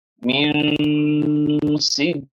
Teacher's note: نون کی آواز کو آپ کو چھپانا رہے گا، واضح کر کے نہیں پڑھنا ہے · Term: اخفا